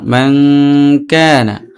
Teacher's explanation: নুন সাকিনের পরে কাফ আসছে ইখফা হয়েছে, এই জন্য এক আলিফ গুণ করব। আর জবর পাশে খালি আলিফ মদের হরফ এক আলিফ টান।